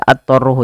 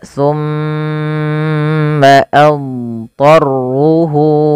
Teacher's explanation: Dhad itu punya samanya sifat istitalah. Istitalah yaitu memanjang suara dhadnya dan dia punya bacaan idbaq dan isti'la. Nah, ini memang huruf yang paling lengkap, komplit, tebal gitu ya. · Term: huruf dhad